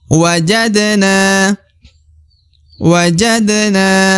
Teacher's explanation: Dal sukun ya yang merupakan huruf pantul harus dipantulkan wajadna kemudian na yang di ujung dibaca Dua harakat wajib karena terdapat alif di depan huruf na maka harus dipanjangkan dua harakat